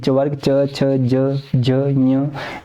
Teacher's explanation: पूरा च वर्ग आपका कहां से उच्चारित किया जाता है तालू से